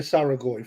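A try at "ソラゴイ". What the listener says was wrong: There is no A in the start of Soragoi. It's S-O-R-A.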